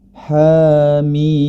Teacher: Mad thobii Harfi berarti dua harakat sedangkan mad lazim mutsaqal Harfi enam harakat · Ha dibaca dengan dua harakat